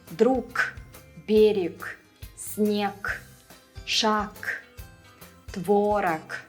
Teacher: In almost all the words, the final g will turn into a k.